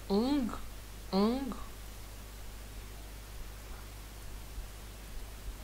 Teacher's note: C'est très nasal et on parle bien derrière au niveau de la gorge. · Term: le ang